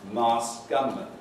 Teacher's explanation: The sequence SKT is unusual in that the K is elided.